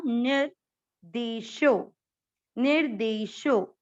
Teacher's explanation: आधे र को नी के साथ पढ़ना